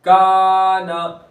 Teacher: अलिफ मद्दा हो रहा है, अलिफ बारीक होगा इसलिए कि अलिफ से पहले बारीक हर्फ है